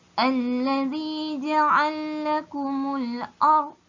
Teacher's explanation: Bunyi lam pertama dimasukkan ke dalam lam yang kedua. Okey, ada dua huruf lam kat sini. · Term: idgham kabir